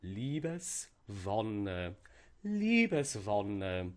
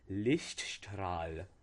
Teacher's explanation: And we see that the first part receives the stress, and this is very typical for these compound words for the main part to receive the main stress.